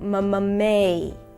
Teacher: Now we're going into the A as in day diphthong, starting with an E